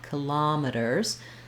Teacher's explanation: thinking of this O as that open, unrounded ah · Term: ah vowel